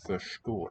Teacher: I would say it's 2 segments, retroflex S, retroflex T.